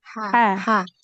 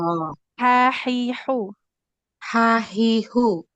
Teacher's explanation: kalau ha itu dia di tengah tenggoran